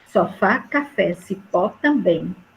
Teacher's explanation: todas são oxítonas porque a sílaba tônica é a última